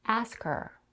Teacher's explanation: when you connect the two words ask and her you can drop the H sound in the pronoun her · the first vowel in the word ask is a as in cat followed by the consonant cluster SK